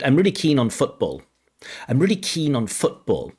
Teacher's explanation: in the construction keen on, the stress should not be on the word on. The sentence stress should not be on the word on.